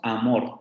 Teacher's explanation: la A del español es más central con respecto a la cardinal. La cardinal aquí nos la maneja como anterior.